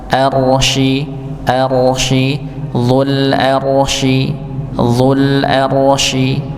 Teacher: dul arsyi al-arsyi ya rnya ditebalkan